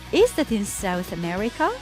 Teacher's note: I asked with a rising tone